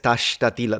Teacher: The fact that he uses the sh, we don't do it in Palermo.